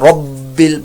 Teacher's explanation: رب با مشدد قلقلہ ہو رہا ہے